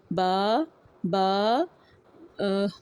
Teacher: بند ہونٹوں کے گیلے حصے سے